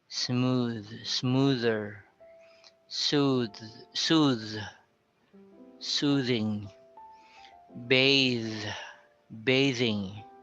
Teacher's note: we also have the hard th in the final position, like smooth. It's like a soft d sound.